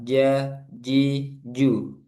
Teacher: kalau jim enggak boleh ada udara